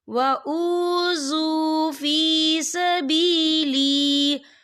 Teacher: فَالَّذِينَ هَاجَرُوا وَأُخْرِجُوا مِن دِيَارِهِمْ وَأُوذُوا فِي سَبِيلِي، یہ دیکھیے وَأُوذُوا، یہاں پہ واو مدہ ہو رہا ہے، واو ساکن ہے، واو ساکن سے پہلے پیش ہے، تو ہم اسے 2 یا 3 حرکت کے برابر کھینچیں گے